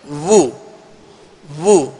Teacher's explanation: पेश दोनों होठों के कामिल गोल करने से अदा होता है, तो इसमें गोल रखेंगे वू वू, वा वी वू।